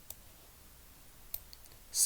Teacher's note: स जो अपने आप में दांत से बोला जाता है, दांत से धुन निकलती है इसकी